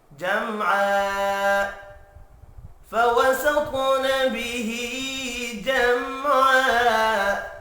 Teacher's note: جم میم ساکن ہے، آگے عین ہے، اظہار شفوی ہوگا، غنہ نہیں ہوگا · اور یہاں بھی وف کی صورت میں 2 زبر ایک زبر میں تبدیل ہو کر الف مدہ پڑھا جائے گا۔ الف مدہ کو ایک الف کی مقدار میں کھینچ کر بھی پڑھنا ہے